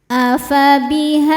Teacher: Cara bacanya panjang 2 harokat. Namun ketika diwasolkan, zalnya dibaca pendek karena madnya gugur. Ada proses namanya takhallus bil hadfi.